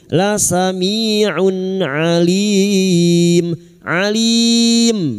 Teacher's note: bertemunya mat dengan huruf hidup yang dibaca waqaf mat arid li sukun. 4 harokat kita panjangkan.